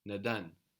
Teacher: This is not nedan, this is not an A, this is just an open E.